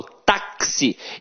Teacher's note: Então, o X aqui tem som de KS. Ou seja, uma letra tem 2 sons. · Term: dífono